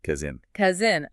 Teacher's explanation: And the S actually behaves more like a Z in the middle. It buzzes.